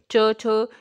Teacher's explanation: ਸਾਡੀ ਜੋ ਜੀਭ ਹੈਗੀ ਹੈ ਉਹ ਤਾਲੂਏ ਨਾਲ ਟੱਚ ਕਰਦੀ ਹੈ, ਅਤੇ ਤਾਲੂਏ ਨਾਲ ਟੱਚ ਕਰਨ ਤੋਂ ਬਾਅਦ ਇਹ ਧੁਨੀਆਂ ਦਾ ਉਚਾਰਨ ਕੀਤਾ ਜਾਂਦਾ ਹੈ। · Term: ਤਾਲਵੀ ਧੁਨੀਆਂ